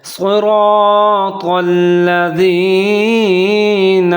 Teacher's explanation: اب یہاں صاد کو موٹا پڑھنا ہے، را کو بھی موٹا پڑھنا ہے اور طا کو بھی موٹا پڑھنا ہے۔